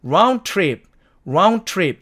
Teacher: 똑같은 말이 두 개가 있으니까 앞에 있는 드가 사라지는 거죠. 그래서 남은 말이 round trip이 됩니다.